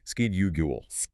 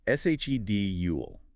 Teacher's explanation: In American English, it is pronounced with a hard six sound at the beginning, schedule. And in British English, it is pronounced with a soft she sound at the beginning. Schedule. Both are perfectly valid anywhere in the world.